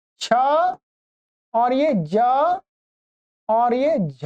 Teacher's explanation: इतने वर्णों का स्थान माना गया है तालु अर्थात इनके उच्चारण में जो जीहवा का आगे का भाग है वो जिह्वा का अग्र भाग मुड़ के तालु की तरफ जाता है। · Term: तालव्य वर्ण